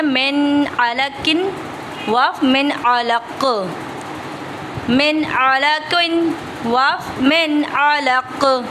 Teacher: وف میں ہم جو ہے کاف کو ساکن کر دیں گے تو کاف پہ قلقلہ ہوگا, تو اس وجہ سے من علقن.